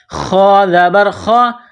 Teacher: خا جس طرح انسان گلے سے بلغم نکالتا ہے اسی طرح خا کو نکالنا ہے